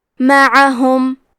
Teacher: کلمت معہم میں حرف العین کے ادائیگی حلق کے درمیان والے حصے سے ہے، کیونکہ عین پہ زبر ہے اور ہا اور میم پہ پیش ہے، تو ہم یہ تینوں حرکات کو ظاہر کریں گے.